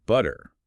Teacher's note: the T there sounds softer, almost like a quick D or a flap